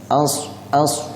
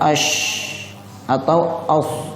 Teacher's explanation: cara pengucapan huruf shad harus ada bunyi siulannya